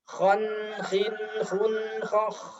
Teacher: Ketika disambung, hati-hati tanwin bertemu kho dibaca jelas. Tapi masih ada sifat tawasud atau mengalirnya suara sedikit.